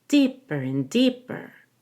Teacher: that BER is lower in pitch and quieter than deep.